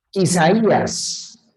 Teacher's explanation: La mayor fuerza de voz recae en la cerrada. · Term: hiato